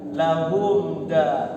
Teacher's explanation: Mimnya nggak boleh ditahan lama-lama. Harus lahum da, sukunkan lahum da, langsung masuk kepada huruf dal. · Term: izhar syafawi